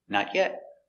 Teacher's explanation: Not yet is affirmative idea. The intonation goes down at the end.